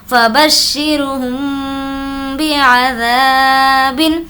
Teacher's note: ذا کو اس لیے کھینچ کر پڑھیں گے کیونکہ الف مدہ کا قاعدہ ہے · یہاں پر اخفاء شفوی، میم ساکن کے بعد با ہے تو غنّے کے ساتھ اخفاء۔ فبشرہم بی، با زیر بی، عین زبر ع، ذال الف زبر ذا، بعذا، با دو زیر بن، بعذاب، فبشرہم بعذاب۔